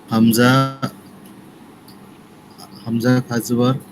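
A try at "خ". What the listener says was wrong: হামজা এটা তো খ।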